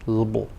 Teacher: the first syllable of syllable is stressed, and it's longer than the others. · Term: stressed syllable